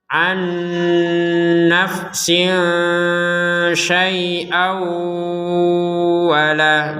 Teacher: Jadi dimasukkan tanwin kepada huruf waw sehingga menjadi didengungkan, dan dimasukkan dan didengungkan.